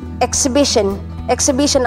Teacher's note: Ang stress po ay nasa third syllable.